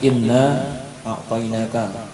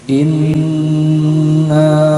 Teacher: Maka setiap nun bertasydid sama mim bertasydid, ini hukumnya adalah dibaca gunnah, dibaca berdengung selama 2 harokat. Dibaca intinya itu ditahan agak lama selama kurang lebih 2 harokat.